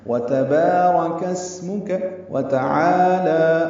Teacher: واو تا کو جلدی پڑھنا ہے، عَالَى کو 2 حرکات لمبا کرنا ہے